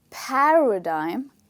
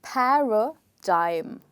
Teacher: when you say the first part there is air coming out of your mouth and you put in more energy when you say the first part so paradigm d-i-m-e dime like you say dice that's the same